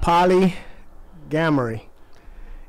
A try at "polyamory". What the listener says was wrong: gamory. No, ain't no G in that. Polyamory.